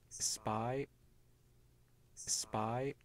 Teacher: We see the turbulence at the beginning. That's for the fricative S. And then there's this silence where the lips are closed for the P.